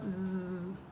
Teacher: you can feel the vibration in your throat